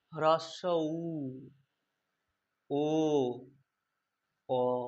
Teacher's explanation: আমাদের ঠোঁটটা কিন্তু প্রসারিত হচ্ছে না, আস্তে আস্তে কি হচ্ছে, কুঞ্চিত হয়ে গোল হয়ে যাচ্ছে। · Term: কুঞ্চিত স্বর